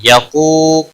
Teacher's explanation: قاف حروف مستعلیہ میں سے پر پڑا جائے گا ، واو مدہ ہے 1 الف کے برابر کھینچ کر پڑھیں